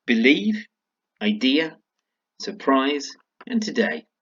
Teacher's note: 4 of them had the stress on the second syllable